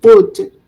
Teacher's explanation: La OU se transforma en U y la L no se pronuncia.